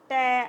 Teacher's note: मूर्धा ट अब आप बोलोगे तो जीभ जो है वो मसूड़े के ऊपर टच करेगी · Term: मूर्धन्य